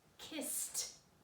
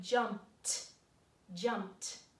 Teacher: unvoiced means the letter sound at the end of this word is just breath